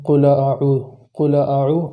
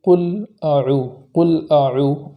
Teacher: اس میں لام ساکن جو ہے اسے متحرک ہونے سے بچانا ہے، اس طریقے سے نہ ہو قل اعوذ قل اعوذ، اس طریقے سے نہ ہو بلکہ اس طریقے سے پڑھیں گے قل اعوذ، اس طریقے سے پڑھیں گے۔